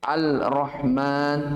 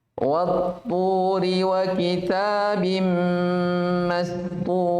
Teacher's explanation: Ka'annal alifa wal lama ma'dumatun. Seakan-akan alif dan lamnya, maksudnya alnya tidak dibaca. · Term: idgham syamsi